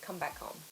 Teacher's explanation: difficult to say the H sound clearly so in those cases it's quite common to make the H sound quite soft